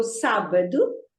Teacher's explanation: the stress is on the first syllable because always when there is an accent on a syllable, the stress is on that syllable